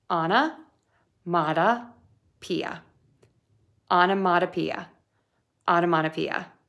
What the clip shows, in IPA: ɑn ə mɔd ə pi ə